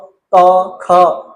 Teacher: क ख कोई वाइब्रेशन नहीं होगी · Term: अघोष